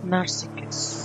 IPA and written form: nɑːrˈsɪsəs (Narcissus)